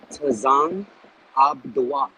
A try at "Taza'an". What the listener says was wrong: So as opposed to being Tazan, it would be Taza'an. Taza'an.